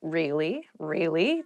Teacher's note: use it to show you're interested in a conversation with upward intonation